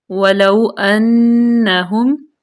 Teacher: یہاں پہ نون جو ہے یہ مشدد ہے یہاں پہ غنہ کریں گے